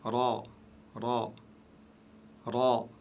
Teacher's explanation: Donc, vous utilisez la langue au milieu du palais vers le haut.